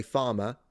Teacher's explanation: So in my case, I would say farmer. So my accent is non-rotic.